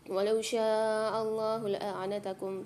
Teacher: شاء میں شین کے ساتھ الف مد ہے، کھینچ کے پڑھیں گے 5 سے 6 الف کی مقدار